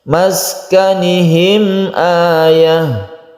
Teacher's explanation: Mem mati bertemu dengan hamzah, ini kita sebut dengan izhar syafawi. Izhar artinya jelas, jadi di sini tidak berdengung.